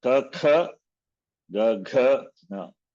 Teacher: gutturals. These are pronounced from the throat